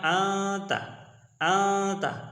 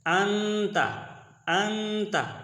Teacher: آواز آدھی آواز ناک میں چھپائیں گے اور آدھی آواز منہ میں آئے گی، منہ سے آئے گی، تو یہ ہوگا اخفا۔